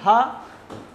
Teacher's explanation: हा का भी उच्चारण स्थान कंठ है